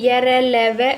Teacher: अल्प प्राण यानी कि कम वायु जो है वो बाहर निकलती है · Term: अंतस्थ व्यंजन